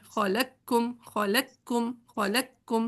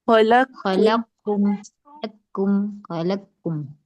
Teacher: تو ڈائریکٹ باریک والے کاف پہ تشدید پڑھنی ہے، موٹے والے قاف کو بالکل اگنور کر دینا ہے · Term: ادغام تام